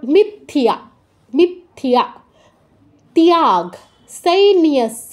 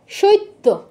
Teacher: তয়ের পর ইয় আছে, মানে তয় হসন্ত যুগ ইয়, তয়ের পর ইয় ফলা আছে মানে তয় হসন্ত যুগ ইয়, এটাকে আমরা ভাঙলে পাই। তার মানে তয়ের পূর্ণ উচ্চারণ হবে না, ততে জাস্ট টাচ, তারপর ইয় এর পূর্ণ উচ্চারণ